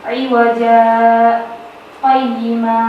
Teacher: bacaan saktah ialah berhenti sejenak sekedar satu alif tanpa bernafas.